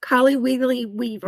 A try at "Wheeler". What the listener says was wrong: No, there's no Weegly. It's Wheeler.